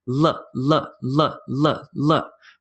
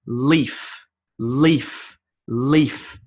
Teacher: my tongue actually hits my top teeth